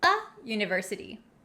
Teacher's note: the other hand a word that starts with a vowel university the u in university doesn't sound like a vowel it has the y yeah sound so we say a university not an university kind of tricky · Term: Y y sound